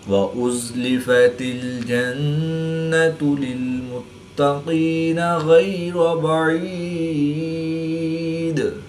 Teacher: قاف اور غین حروف مستعلیہ میں سے ہے تو ان کو پر یعنی موٹا پڑھیں گے۔ را کے اوپر زبر ہے تو اس لیے را کو پر یعنی موٹا پڑھیں گے